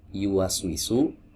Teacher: Nah, ini bertumpunya di mana? Bertumpunya ada di wasatul lisan. Ada di tengah lidah bertemu dengan langit-langit di atasnya. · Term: ya ghairu madiyah